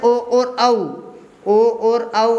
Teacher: ओ और औ आपके कंठ ओष्ठ्य से बोले जाते हैं